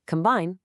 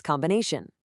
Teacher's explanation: In combine, you have that long I sound, but in the much longer combination, that I just softens into that unstressed uh sound, the schwa. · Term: long vowel to schwa shift